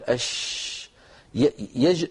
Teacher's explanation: وسط اللسان مانشئه فلما ينشا الصوت من هنا لما نقول اش ينشا الصوت من وسط اللسان ويمشي الى مقدمه الفم · كما مر معنا في مخارج الحروف حرف ينشا من وسط اللسان وهو حرف مهموس ما معنى مهموس يعني لا يعمل الوتران الصوتيان عند نطقها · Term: التفشي, حرف الشين